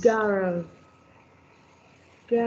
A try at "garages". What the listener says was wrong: Garages. Gar- yes. The garage. You will add es. Garages.